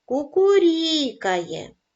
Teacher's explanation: наголос падає на склад рі